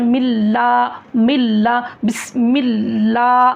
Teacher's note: तो मुंह खोल के बोलना है गोल गोल नहीं करना है